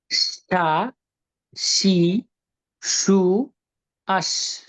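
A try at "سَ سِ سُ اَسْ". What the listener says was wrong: সুন্দর ছিল এই যে সা সি, আগে থেকে বাতাসটা বের করা, এটা ইম্পর্টেন্ট।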